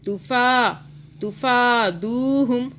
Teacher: فا کو کھینچا، دو کو کھینچا کیونکہ دال کے آگے واو آ رہا ہے، ساکن واو